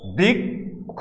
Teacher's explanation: একবার ক উচ্চারণ করতেছি, আবার খ উচ্চারণ করতেছি, দুটো মিলে এটা উচ্চারণ আমরা করতেছি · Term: ক হসন্ত খ